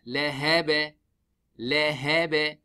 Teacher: When we make the waqf, we make the ba sakin, then ba sakin huruf al qalqala qaf ta ba jim dal, we do the qalqala laha ba.